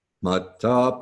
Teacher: Oh, you pronounce each letter that you see. So the two T's together, you catch each one of those as opposed to merging them into a D sound.